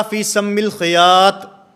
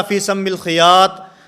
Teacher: اس میں مخرج کی غلطی تھی کہ وہ طا کو تا پڑھ رہے تھے